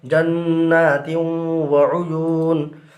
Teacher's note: یہاں پر بھی تنوین کے بعد حروف یرملونہ میں سے واو آ رہا ہے، لہٰذا ادغام مع الغنہ ہوگا، یعنی غنہ کے ساتھ ادغام کریں گے.